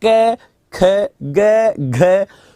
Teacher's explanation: जैसे आपको पहले बोलना है पहला, तीसरा, पांचवा, तो आपने बोला ऐसे, हाथ को आगे रखो और अब बोलिए क, ख, ग, घ। तो क बोलने में हवा कम निकली, खा में ज्यादा निकली, गा में कम निकली, घा में ज्यादा निकली।